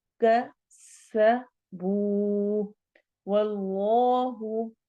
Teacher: اس میں جلالہ کے لام کو ہم موٹا پڑھیں گے واو کی فتحہ کی وجہ سے